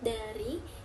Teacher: Bunyi apikal oleh ujung lidah seperti D pada kata dari